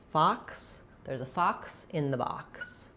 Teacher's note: The vowel letter O says the ah vowel here.